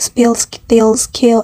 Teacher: However, in SP, ST, SK we find an unaspirated plosive